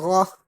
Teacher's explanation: غین اور خا حلق کے اوپر سے ادا کرتے ہیں